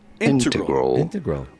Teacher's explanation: an emphasis on the first syllable